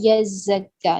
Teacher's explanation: یزکا زا پہ جو ہے وہ ٹائم دیں گے کیونکہ شد ہے. ٹھیک، پہلے اس کی ساکن پڑھیں گے، اس کے بعد اس کی حرکت.